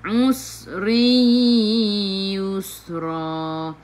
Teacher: Sin sifat hurufnya safir, kena bunyikan macam bunyi belalang.